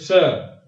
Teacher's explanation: जिह्वा पूरा स्पर्श नहीं करेगी, एकदम नजदीक होगी लेकिन बीच में वायु घर्षण करेगी। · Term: मूर्धन्य सा